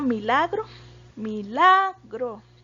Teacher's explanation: milagro tiene el acento en la sílaba la entonces es la penúltima verdad la penúltima sílaba de la palabra pero en este caso